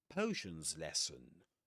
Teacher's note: So, potions lesson, again a compound noun, we accent the first word in the item